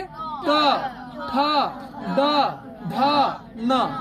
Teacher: ट ठ ड ढ ये कहाँ से बोला जाएगा? मूर्धा से बोला जाएगा।